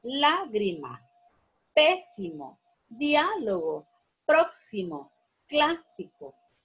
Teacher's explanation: La sílaba tónica es la antepenúltima sílaba. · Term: esdrújulas